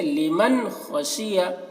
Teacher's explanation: اب یہاں پر دیکھیے نون ساکن ہے، نون ساکن کے بعد حروف حلقی میں سے خا آ رہا ہے، ٹھیک ہے، تو یہاں پر نون کو ظاہر کر کے پڑھیں گے، غنہ نہیں کریں گے